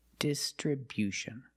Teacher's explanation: Distribution with a stress on a first and third syllable